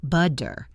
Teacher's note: In American English especially, when a T is between two vowel sounds, it often changes into a soft DD sound. This is called the flap T.